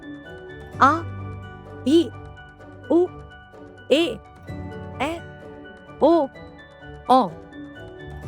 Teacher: दीर्घ स्वर इनके उच्चारण में ह्रस्व स्वरों के उच्चारण से दुगुना समय लगता है।